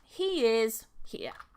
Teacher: The first word ends in a vowel sound, next word starts in another vowel sound, and we're going to link them together with a y sound in the middle. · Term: link with a y